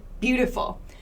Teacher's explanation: so bu has the highest amount of stress the most stress t has no stress full has a little bit of stress